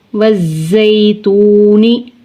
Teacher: نون زیر نی، وزیتونی۔ واو ساکن سے پہلے پیش ہے، واو مدہ کھینچ کر پڑھیں گے